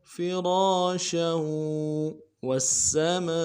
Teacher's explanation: واو کو آگے سین کے ساتھ ملانا ہے، تشدید ہے · را کے بعد الف مدہ ہے فرا میں، ایک الف دال میں کھینچنا ہے. فرا، شین کے تنوین کو واو کے ساتھ ملانا ہے اور زور دینا ہے.